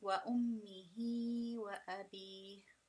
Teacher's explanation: The reason you pull on أمه with times 2 is because this is a Sila Sughra.